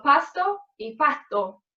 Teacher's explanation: hay una aspiración o pérdida total de la S al final de la sílaba y también dentro de la palabra